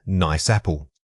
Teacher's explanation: Notice how you don't stop after saying nice. The air carries right through making it one continuous unit. Practice treating this phrase as if it were a single word.